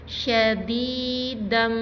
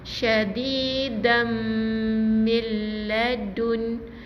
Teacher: Maksudnya masukkan bunyi nun ni ke dalam, bunyi tanwin ni ke dalam bunyi mim yang bersabdu ni. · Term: idgham bi gunnah